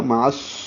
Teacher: عین وسط حلق سے نکالیں گے، صاد سے ملائیں گے، ادغام شمسی ہوگا اور الف لام نہیں پڑھا جائے گا، معص ہو جائے گا.